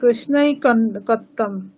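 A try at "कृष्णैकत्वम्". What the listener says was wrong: কৃষ্ণৈকত্বম। কৃষ্ণ একত্বম, ঐকত্বম নয়, একত্বম। কৃষ্ণ একত্বম। কৃষ্ণ একত্বম।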